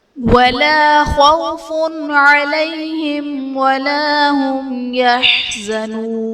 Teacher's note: خوف علیہم میں فا پر 2 پیش کی تنوین، تنوین کے بعد حروف حلقی میں سے عین ہے تو یہاں پر اظہار کا قاعدہ ہوگا، یعنی تنوین میں ہم غنہ نہیں کریں گے